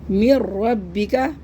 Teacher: میم کو را سے ہم نے ملایا بھی لیکن غنہ نہیں کیا. میم نون را زیر میر، را با زبر رب، میر رب، یہاں پہ تشدید ہے، میر رب با زیر بی، میر ربی، کاف زبر کا، میر ربکا، میر ربک.